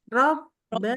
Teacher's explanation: Jadi waktu pas bibirnya ketemu tuh suaranya berhenti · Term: huruf ba